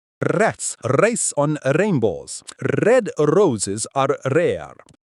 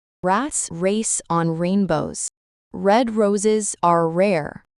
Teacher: The American R is neither trilled nor tapped. Instead, it is a smooth sound made with the tongue pulled back and not touching anything in the mouth. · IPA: /ɹ/